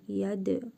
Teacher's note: Dəl hərfinin üzərində cəzm var. Qalqalə edərək vurğulu tələffüz edirik.